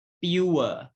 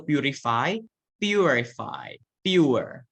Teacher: The U is longer in duration and forms the nucleus of the diphthong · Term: diphthong ua